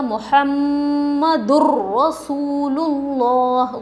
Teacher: غنّہ نہیں ہے یہاں پر نون کی آواز ناک میں نہیں جا رہی ہے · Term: بغیر غنّے کے